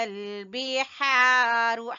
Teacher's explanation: ہا کو وسط حلق سے، حلق کے درمیان والے حصے سے۔